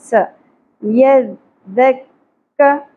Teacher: سین میں سیٹی کی اواز ہوگی زبر کو زیادہ نہیں کھینچیں گے س ید یہاں پر دھیان